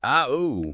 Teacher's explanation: it sort of rises from that open ha position, mouth wide, tongue low, and then it kind of falls as your mouth rounds and tightens into that ooh shape. A starting open and ending rounded. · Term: rising, falling sound